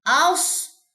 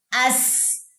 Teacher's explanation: صاد اور سین میں فرق آنا چاہیے، چاہے دونوں میں سیٹی ہے، چاہے دونوں کا مخرج ایک ہے، لیکن ایک میں اقصا لسان اٹھے گی اور سین میں اقصا لسان نہیں اٹھے گی